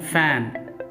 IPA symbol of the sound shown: f